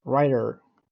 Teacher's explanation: in American English T and D both have a very light voice pronunciation between vowels so writer and writer would sound the same like writer also